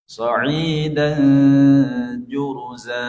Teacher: Sehingga tanwinnya tidak dibaca jelas, tapi dibaca samar-samar. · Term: Ikhfa